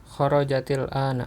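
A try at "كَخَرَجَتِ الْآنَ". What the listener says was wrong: Bagus ya.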